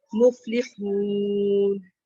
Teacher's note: ہم المفلحون، اور فا کے اوپر جو ہے نا ہمس آئے گا، مفلحون. اور ہا کو بھی جو ہے نا اس کی آواز جو ہے وہ حلق سے ادا ہوگی، پہلے ہمس آئے گا اور پھر ہا کی آواز آئے گی.